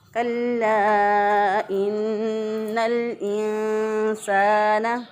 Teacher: इंसाना अलिफ मुद्दा है, यहाँ पे 1 अलिफ के बराबर इसको लंबा करना है। अगर कोई लंबा ना करे बल्कि इसको छोटा कर दे, इंसाना पढ़ दे तो गलत हो जाएगा।